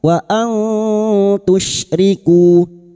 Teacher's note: Haqqiqi wa nun sukun bertemu ta ikfa hakiki. Kita samarkan bunyi nun sukun dan mendengung selama tiga harakat.